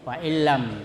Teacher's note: Jadi atau ditasdid fa'illam. Jadi seolah-olah lam itu dua padahal satu, karena dimasukkan nunnya itu kepada lam. Jadi dan tidak mendengung. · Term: idgham bila gunnah